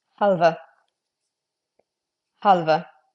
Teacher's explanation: Weakly pronouncing the H, definitely pronouncing the L, and as I just mentioned, that E is getting its own syllable.